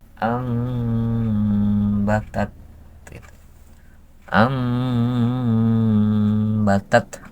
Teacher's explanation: ditukarkanlah Nun itu ke mim dalam segi suaranya tetap dalam tulisannya ya amatat Am batat nunnya itu ditukarkan ke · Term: iqlab